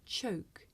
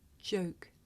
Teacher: okay you may find it difficult to hear the difference between the voiceless sound that you hear at the beginning of the word choke and the voiced sound that you hear at the beginning of the word joke